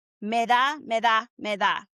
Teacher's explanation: And the D sound is really like a TH sound that we have in English, right? So it's really soft. It's not a hard D like we have in English.